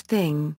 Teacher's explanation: voiceless dental non-sibilant fricative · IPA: [θ]